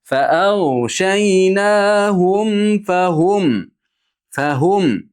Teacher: Fa'awshaynahum fahum deb mimga aniq labimizni bir-biriga tegizamiz, keyin fa'ga ochamiz.